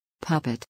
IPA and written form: ˈpʌp.ɪt (puppet)